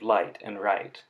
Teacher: The liquids are the l and r sounds at the beginning of light and right.